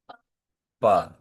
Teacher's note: इनका उच्चारण स्थान क्या है जी? ओष्ठ, दोनों होंठ।